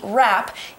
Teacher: when we use the letters W and R together, we only hear the R sound